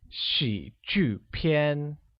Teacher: pronounced with a falling rising tone on I, a falling tone on U, and a high level tone on A